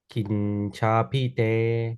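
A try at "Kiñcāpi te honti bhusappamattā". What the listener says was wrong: Capi. Long A. Kincapite honti. Don't forget your long A's and your long I's.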